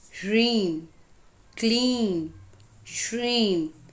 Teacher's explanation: उदाहरण के लिए, ह्रीं, क्लीं, श्रीं, इन बीज मंत्रों में ईं की ध्वनि लंबी होती है। बिंदु का उच्चारण नासिक्य होता है। अगर इन्हें गलत बोला जाए तो उनका कंपन बदल जाता है।